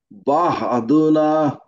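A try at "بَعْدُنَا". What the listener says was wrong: এখানে হা কোথায়? আপনি হা কেন বললেন? আপনি বাংলাটা পড়েন বা দুনা।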